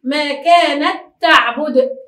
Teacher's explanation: عند النطق نقول ما كانت تعبد، تاء ننطقها تاء واحدة مشددة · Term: إدغام المتماثلين